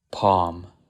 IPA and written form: pɑm (PALM)